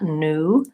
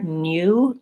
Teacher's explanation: Americans will just pronounce that new with an N and an U